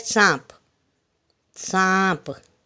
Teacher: उन्हें बोलते समय हवा मुंह और नाक से एक साथ बाहर निकलती है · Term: चंद्रबिंदु